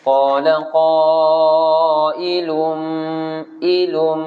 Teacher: Tanwin. Tanwin bertemu dengan huruf mim. Itu adalah idgham ma'al ghunnah.